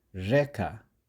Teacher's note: This is the Western Slavic regional variant of the soft or palatalized R that now acts more like a fricative.